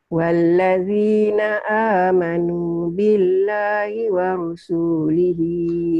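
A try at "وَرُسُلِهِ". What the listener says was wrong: Pendek. Wa rusulihi. Di sini enggak panjang. Di ayat lain ya panjang. Di sini wa rusulihi ya.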